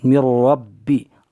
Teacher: را با زبر رب با زیر بی، را پر زبر ہے، را پر زبر ہونے کی وجہ سے را کو پر پڑھیں گے